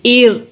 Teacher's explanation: حمزہ را زبر آر، آر آر. یہاں پہ را ساکن سے پہلے کسرہ ہے تو را باریک پڑھیں گے